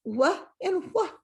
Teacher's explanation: Even though this says wha, we don't really say the H when we say words fast.